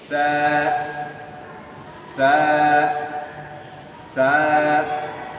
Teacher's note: জিহ্বার আগা উপরের দুইটা আগার সাথে লাগিয়ে একেবারে নরম সফট সফট নরম করে বলতে হবে